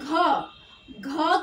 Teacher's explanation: घ जब आप बोलोगे तो आप देखोगे कि आपके कंठ में कुछ हो रहा है वाइब्रेशन टाइप का